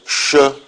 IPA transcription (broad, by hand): ʃ